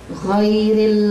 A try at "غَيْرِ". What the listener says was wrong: Ya, kayak kho bunyinya sana, semacam kho bunyinya itu. Ya, ngambi, sukun. Khairil. Kayak kho itu. Khairil maghdubi. خ